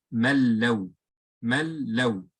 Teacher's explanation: There is no trace of the noon remaining there. · you don't do any extra pull or extra ghunna because it's ra or lam without ghunna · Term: idgham